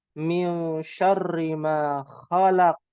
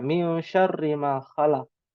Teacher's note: ada ikhfa, ya, ada qalqalah di akhir karena diwakafkan